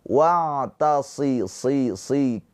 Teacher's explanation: Maka harus dipertahankan ketebalan huruf shad walaupun dia berharokat tipis, walaupun dia berharokat kasroh, afwan.